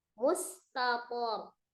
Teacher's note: Mustaqor ya, bacanya rohnya sukun, disukunkan, kedua tanwin disukunkan, sebelumnya adalah fathah di pokok, maka rohnya juga dibaca dengan tebal atau tafkhim ya